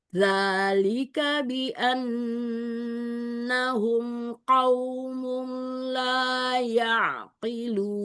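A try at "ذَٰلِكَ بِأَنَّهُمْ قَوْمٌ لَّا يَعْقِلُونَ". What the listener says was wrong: Qafnya mau naikkan lagi. Qaumu, qaumu. Iya, kadang ada qaf itu kan dia sifatnya jahar syiddah ya.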